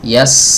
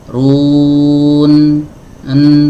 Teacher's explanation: Huruf sin aliran suaranya lebih panjang daripada huruf nun.